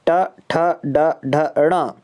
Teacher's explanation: मूर्धा से उच्चारित होने वाले वर्ण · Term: मूर्धन्य